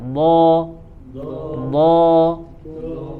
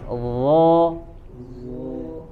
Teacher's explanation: Kalau dho itu ujung lidahnya ditempelkan ke ujung gigi seri bagian atas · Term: huruf dho